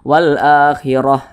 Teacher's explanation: Maka kita baca wal akhirah, jangan dibaca wal akhirah, wal akhirat atau wal akhirati, jangan. Kalau kita berwaqaf, huruf ta-nya dirubah menjadi huruf ha. Tapi kalau diwasolkan ya kita baca huruf ta, kita teruskan nih, tidak berhenti. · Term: ta marbutah